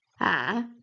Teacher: Third tone you go low and then rise again.